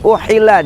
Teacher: huruf ha tengah tenggorokan